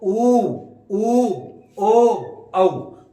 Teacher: और जैसे देखें व्रत के आधार पर कैसे बोलेंगे, ऊ बोले अपन ने, फिर बोलेंगे ऊ बड़ा हो गया, फिर बोलेंगे ओ और औ। तो अपना जो ओष्ठ होते हैं वो गोल आकृति में हो जाते हैं ना, वृत्त की आकृति में हो गया। तो ऊ ओ औ, तो ये गोल आकृति में हो जाता है, उसको बोलते हैं वृत्त की आकृति के जैसे।